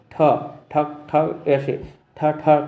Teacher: टा मूर्धा, ठ ठक ठक ऐसे ठ ठ की आवाज़ आती है, यानी कि मूर्धा में ढक ढक होता है। तो ट वर्ग के मूर्धा से टकराती है आवाज़